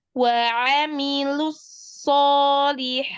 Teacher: Di situ dilatih lu tipis, sodnya baru tebal. Lalu sodnya itu rokhwah.